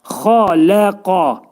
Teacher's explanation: Bu qaf hərfinin məxrəci dilin sonu və dilçəyin başlanğıcındadır. Xaləqani dedikdə qaf və kəf hərflərinin hibridi şəklində deməliyik.